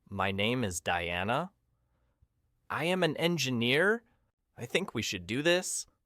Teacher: The misconception is that you should sound friendly. So you make your voice go up at the end. You make statements sound like questions. · Listen to her tone. It goes up. It sounds like she is asking for permission. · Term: uptalk